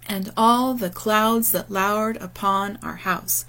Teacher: is from line three and it employs regular iambic pentameter with five feet of two syllables each and the stress falling on the second syllable in each foot · the stress falling on the second syllable in each foot, right, which is an iambic pattern.